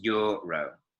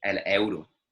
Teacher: In Spanish, they pronounce the vowels separately. · the E and the U kind of squash together to make this Y noise